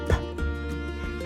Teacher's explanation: the sounds K, P, and T are all aspirated voiceless plosives